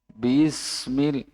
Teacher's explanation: Ketemu sin sukun. Antara ba dan sin sukun itu tidak boleh ada jeda.